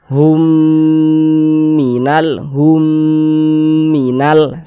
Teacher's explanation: Hum didengungkan didengungkan itu suaranya itu kita tahan kita panjangkan sejinak sepanjang dua harakat Hum Minal Hum Minal seperti itu kemudian